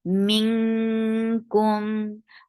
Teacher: And this is ikhfa. And you are keeping the sound in your nose very nicely.